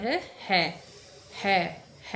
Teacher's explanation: जीभ कहीं नहीं छू रही है, सिर्फ ऊष्मा बाहर निकल रही है और गले का प्रयोग हो रहा है, यानी कि है का उच्चारण स्थान है कंठ। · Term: ऊष्म व्यंजन